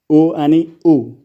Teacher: उ आणि उ चा उच्चार करताना ओठांचा आकार गोल होतो, म्हणून औष्ठ्य वर्ण. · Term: औष्ठ्य स्वर